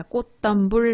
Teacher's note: 꽃덤불은 치읓이 디귿으로 변하는 음절의 끝소리 규칙이 있고요. 디귿이 쌍디귿으로 변하는 된소리 되기 있죠. 이두 가지는 모두 교체에 해당이 되니까 역시 맞는 선지.